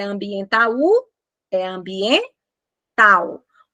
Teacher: Pronuncia a palavra, não é ambiental, é ambiental. O A e o U saem na mesma emissão de som. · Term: ditongo